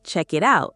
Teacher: The K flows into the I. The T flows into the O U. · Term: linking